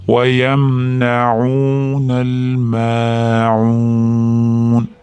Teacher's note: Ma'unda mimdan keyin alif mat kelyapti. 1-2 deguncha cho'zasizlar.